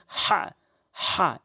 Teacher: হা টি হলকের মাঝখান থেকে এভাবে বলতে হবে।